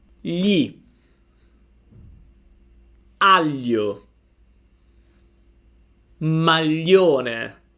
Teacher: when you pronounce gl try to pronounce an l but you have to scratch your palate with your tongue more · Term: the gl sound